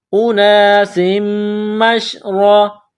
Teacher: اناسم، میم شین زبر مش، اناسم مش، را زبر را، را کے اوپر زبر ہے تو را کو موٹا کرنا ہے